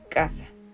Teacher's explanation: la a que tenemos a media y final de la palabra es una vocal abierta